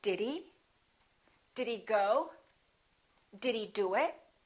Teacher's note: when he comes later, when it's not in the beginning of the word, we generally reduce it